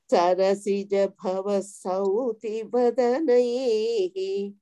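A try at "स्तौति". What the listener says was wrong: Sauti is not there, my dear. Stauti. Ta is there. You are not saying stau. You are saying sau.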